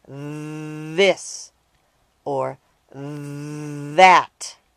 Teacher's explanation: sometimes they are very noisy when they stick out their tongues as in the words this or that the sound is called a voiced th sound